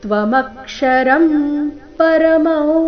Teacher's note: ಅನುಸ್ವಾರದ ಉಚ್ಚಾರಣೆ ನಾಸಿಕ ವ. ಪರಮೌವೇದಿತವ್ಯಂ ಇಲ್ಲಿ ಅನುಸ್ವಾರದ ಉಚ್ಚಾರಣೆ ನ ರೀತಿ.